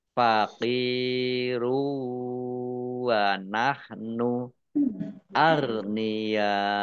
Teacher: Domah tanwin wawu sukun, idgham bi gunnah, masuk dengan mendengung, yaitu mendengung wawu, ditahan 2 harokat.